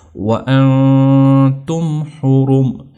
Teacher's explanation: نون کی تنوین کی آواز کو ناک کے اندر لے جانا، تھوڑا اس کو لمبا کرنا، اس کے اوپر سٹے کرنا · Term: غنہ